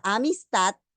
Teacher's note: Si vemos la palabra amistad, la mayor fuerza de voz está en la última sílaba, allí tengo la sílaba tónica. Y las otras dos, que son débiles, vienen a ser sílabas átonas.